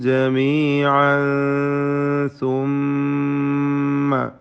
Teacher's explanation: ജമീഅൻ തൻവീനിനെ ഇഖ്ഫ ഹഖീഖി നൽകി മറച്ച് മണിച്ച് അവ്യക്തമാക്കി മണിച്ചുകൊണ്ട് ഉച്ചരിക്കുക